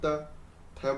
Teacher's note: बोल के देखिए आप, त थ बोलिए, अब द बोल के देखिए, हमारी जीभ दांतों पे जाके अड़ रही है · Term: दंत्य